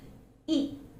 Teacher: the lips are loosely spread and the air is released without any restriction